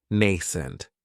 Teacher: It has the long A sound, nascent. That second syllable has that schwa